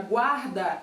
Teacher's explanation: Na palavra guarda, eu tenho GU, mas eu falo o som do U. Então ali no caso não é um dígrafo, é um encontro vocálico da letra U com a letra A que vem depois, certo?